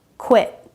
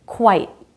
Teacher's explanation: I vowel versus quite. I diphthong. Two sounds.